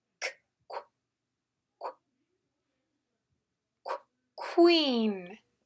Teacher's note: qu is an unvoiced sound. The K and the W blend.